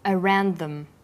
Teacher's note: The final d sound in around is similar in pronunciation to the first sound in the word them.